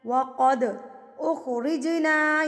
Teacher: یہاں پر دونوں پہ قلقلہ ہو رہا ہے, قد پہ بھی اور رج پہ بھی. جیم بھی ساکن ہے, دال بھی ساکن ہے.